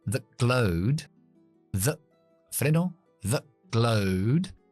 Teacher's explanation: esa T la voy a dejar en parada glotal porque viene una G después.